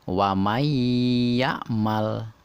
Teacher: nun ditekan ke dua harokat dileburkan ke dalam huruf ya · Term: Idgham Bighunnah, idgham bingunah